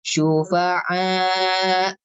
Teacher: Jadi ada hentakan ketika pas akhirnya syufa'a gitu. Kenapa? Karena dia hamzah yang disukun.